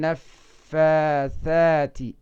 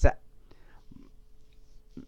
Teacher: waxaad samaysaa carabkaaga caaradiisa waxaad ku qabataa dhoolahaaga sare labada ilkoodee sare